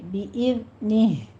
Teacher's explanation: یہاں پہ زائی کی آواز سیٹی کی آواز نہیں آنی چاہیے